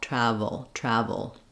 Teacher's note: because we're moving very quickly from the V to the O this UL sound is a syllabic l basically it functions as its own syllable so I don't really need travel um not much vowel there · I'm just lifting the front of the tongue to make the finish and make the L